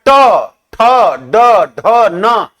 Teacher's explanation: सब में आपका जीभ जो है ऊपर के तालु में जाकर के क्या कर रहा है? सट रहा है।